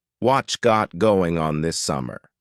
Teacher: or we could say what you got going on this summer watch is what plus you you becomes cha · we're dropping the G